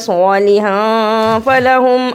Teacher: صاد کو موٹا پڑھا، اخفا کیا